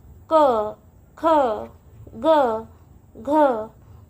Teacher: यांचा उच्चार हा गळ्यामधून म्हणजे कंठामधून होतो म्हणून यांना कंठवर्ण असे म्हणतात